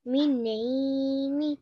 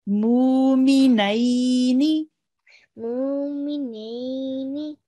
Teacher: Make the nei a little bit longer because we have a ya lean here.